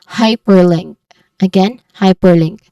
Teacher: The stressed sound is on the first syllable, which is high.